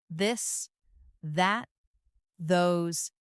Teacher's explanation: Now practice the softer version of thanks where you let your tongue touch your teeth lightly but use your voice